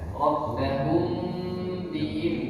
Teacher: Mim sukun jumpa sama ba, ada gunnah di sana, ada dengung. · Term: ikhfa syafawi